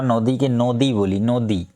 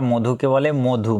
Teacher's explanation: পূর্ববর্তী যে স্বরধ্বনি অ সেই অ টা ও রূপে উচ্চারিত হয়